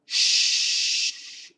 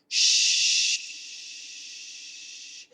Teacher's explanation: SH can be very long. It can be really long. Shh. Because the tongue never touches anything.